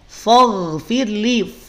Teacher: Kalau bunyinya fo berarti ketarik fa-nya jadi tebal. Sedangkan yang tebal pada lafaz faghfirli hanya ghain saja. Fa-nya jangan ketarik jadi tebal.